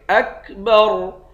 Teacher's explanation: خا اور را دونوں کو موٹا پڑھیں گے۔ اکبر، آخر میں را ساکن ہے، اس را کو موٹا پڑھیں گے۔